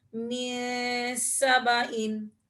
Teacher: یہاں پر بھی نون ساکن کے بعد سین آ رہا ہے، تو یہاں پر بھی ہم اخفا کریں گے